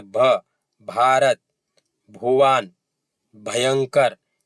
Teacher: और भ, इसमें कंपन हो रहा है और हवा भी ज्यादा निकल रही है, भ, भारत, भुवन, भयंकर, तो ये क्या? कंपन भी हो रहा है और हवा भी ज्यादा निकल रही है